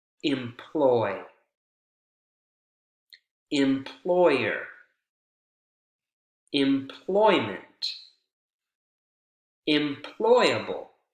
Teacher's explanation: but none of these suffixes Chang or affect the word stress the ploy that syllable continues to be the strong syllable